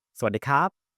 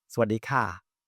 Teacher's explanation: The way that you would notice the difference is that when someone say carb, then they will close their mouth at the end of that word quickly.